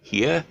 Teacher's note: this is not a triphthong, this is the diphthong, ear. It slides from E to ear.